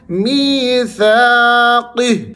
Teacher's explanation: یا مدہ ہے، تو آپ نے می کو لمبا کرتے ہوئے سا کو بھی کھینچنا ہے، اس کے آگے الف مدہ ہے۔